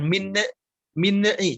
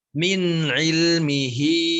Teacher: di kata min ilmihi, nunnya kalau bisa tidak dipantulkan ya. Min ilmihi, jangan min'i, tapi min ilmihi illa bima syaa.